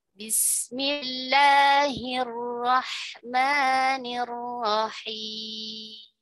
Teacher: bahwa la dan ma di situ hanya mad tabi'i dan panjangnya hanya 2 harakat saja. Tidak boleh terlalu panjang.